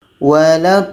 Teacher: Jadi ketika sebut huruf yang ada tasydid ini agak berat dibandingkan dengan huruf yang mati. Jadi cara bacanya kita panjangkan 6 harakat baru sambut dengan huruf yang ada tasydid. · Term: mad lazim kilmi mutsaqqal